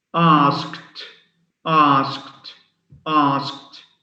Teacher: American asked is S sound, K sound, T sound.